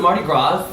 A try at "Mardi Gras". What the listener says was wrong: Mardi Gras. S silent.